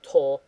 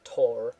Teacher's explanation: RS at the end of characters aren't really pronounced